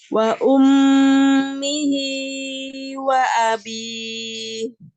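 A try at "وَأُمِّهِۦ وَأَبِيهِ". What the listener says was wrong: 2, kepanjangan. Hi wa abi. Terlalu panjang, Mi. Wa ummihi wa abi.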